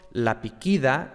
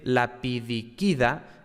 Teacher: Desaparece, se elide la sílaba di. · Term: aplología